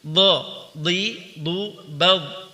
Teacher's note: Perhatikan bad dialirkan suaranya ketika sukun. Ar-rakhawah.